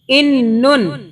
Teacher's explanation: اس میں نون کی جو آواز ہے وہ 2 مرتبہ آ رہی ہے نا, اس لیے کہ اوپر شد ہے. اس شد کو کی وجہ سے ہم اس کو پچھلے حرف سے ملا کے پڑھ رہے ہیں.